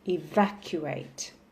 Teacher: So the stress will be on the second syllable, evacuate. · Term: word stress